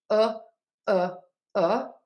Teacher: the uh sound, the less rounded of the vowels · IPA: /ʊ/